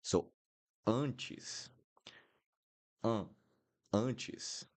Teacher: We have an N right here. So the N will always make the vowel nasal. Even if I don't have this little thing at the top, this will become nasal because I have the N here. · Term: nasal sound